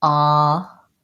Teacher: And I'm also going to see that even though this starts with the letter H, it doesn't have the h sound. It doesn't have any H sound. It starts with the vowel ah, honor, and it ends with the second syllable having the N sound and the vowel honor.